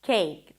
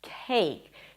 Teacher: So the first k sound was a regular k, cake. The second one was aspirated, as you should pronounce it in English, cake.